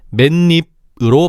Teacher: 맨 입이 아니라 니은이 첨가된 맨입으로 발음해야 되는 거야. 물론 표기는 맨 입이지. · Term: 니은 첨가